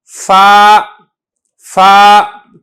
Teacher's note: 12वां मखरज है नीचे के लब और सनाया उलिया का किनारा, इससे फा निकलता है। बहुत आसान बात है ये कि जो आपके नीचे के होंठ हैं, ये वाला होंठ, ये आपने ऊपर का जो सनाया उलिया ऊपर के 2 दांत हैं आपने इनसे मिला के सरफ को अदा करना है, फा फा।